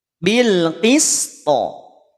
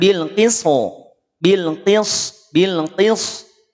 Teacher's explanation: Hati-hati huruf sin jangan sampai ketarik menjadi tebal.